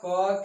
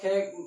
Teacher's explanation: क की उच्चारण, तो कम वायु निकल रहा है। अगर इसी को ख का उच्चारण करने जा रहे हैं तो इसकी वायु की मात्रा अधिक हो जा रही है, बढ़ जा रही है, ठीक है।